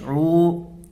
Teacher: عین واو پیش عو، اس کو کھینچ کر کے پڑھیں گے، اس لیے کہ واو مدہ ہوگا، واو ساکن سے پہلے پیش ہے، واو ساکن سے پہلے پیش ہے تو واو مدہ ہوگا، اس کو ایک الف کے برابر کھینچ کر کے پڑھیں گے